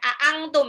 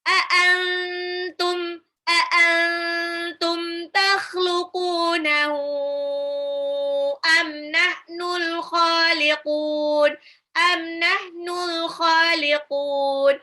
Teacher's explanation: A'antum nunnya hampir melompat ke ta, ke mahrosnya ta. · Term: ikhfa